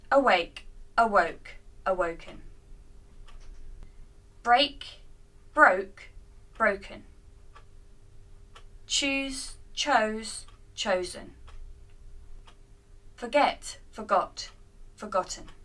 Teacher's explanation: the vowel changes to Oh in the past simple and then we add an end sound to the past participle